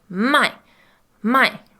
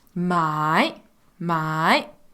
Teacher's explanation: third tone for us kind of is a slow down up tone so you can imagine your head going down up as you're